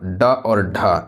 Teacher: ड और ढ ये आपका मुर्धा से बोली जाने वाली व्यंजन है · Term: मुर्धन्य व्यंजन